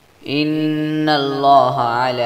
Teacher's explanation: نون میں شدید ہے اس لیے اس پر غنہ کیا جائے گا، لام پر کڑی زبر ہے جس لیے اس کو 1 الف کے برابر لمبا کریں گے، اور لام پر پھر کڑی زبر ہے جس لیے اس کو 1 الف کے برابر لمبا کریں گے۔